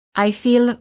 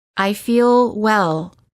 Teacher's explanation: notice how the L is prolonged by keeping the tongue up longer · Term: American L